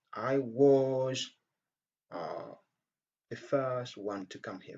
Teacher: Dans cette phrase, donc, je me suis insisté sur was.